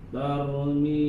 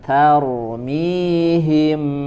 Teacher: Taknya tipis dulu. Huruf ro-nya baru tebal.